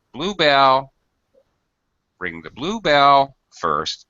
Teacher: contrasting sounds because blue is describing Belle quite closely quite obviously adjective noun both get stressed